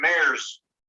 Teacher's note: Mares, this S actually sounds more like a Z.